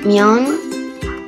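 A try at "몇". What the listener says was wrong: Solo te voy a corregir una cosita de pronunciación. No es Myon, sino Myot. Con Myot. Myot.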